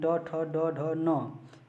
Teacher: ट ठ ड ढ न, इसका उच्चारण स्थान मूर्धा है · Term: टवर्ग